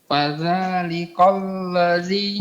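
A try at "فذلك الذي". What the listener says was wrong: Bukan kol, tapi ka. Fadzalika alladzi. Fadzalikal ladzi. Ini yang benar.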